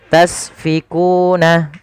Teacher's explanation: alirkan nafasnya karena sin punya sifat sofir. Sifat pertama hamus, ada sifat sofirnya berdesis ya.